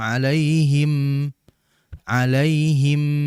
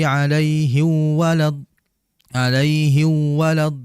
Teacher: hidung ini akan bergetar karena memang keluar di situ juga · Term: ghunah pada mim